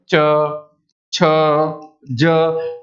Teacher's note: जीभ का जो अगला हिस्सा है वो ऊपर तालू पर लगता है